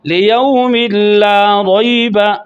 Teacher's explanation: تنوین کا نون داخل ہوا لام میں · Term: ادغام بلا غنہ